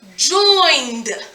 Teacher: First off, we don't even hear the ed, we hear d.